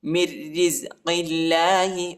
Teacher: میم کو را کے ساتھ ملائیں گے، نون نہیں پڑھا جاتا کیونکہ را پر شد آیا ہے۔ مِن رِزْقِ اللَّهِ، اور را کو باریک پڑھنا ہے، موٹا نہیں پڑھنا، ٹھیک ہے۔